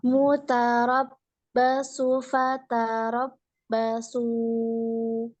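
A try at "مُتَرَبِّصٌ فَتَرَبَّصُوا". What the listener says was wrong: ini pakai bi, mutarob bi. Ini tanwin ya. Domah tanwin, domatain. Cuma hati-hati, malah yang cenderung ini adalah huruf ta. Ta-nya jangan ta gitu, jangan muta, nggak boleh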